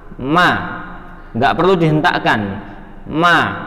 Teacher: bertemunya bibir dengan tertutup, ya, kedua bibir tertutup disertai dengan gunnah. Gunnah itu sini, ya, ma, nggak perlu dihentakkan, ma, tapi ada gunnah atau rongga hidung yang keluar.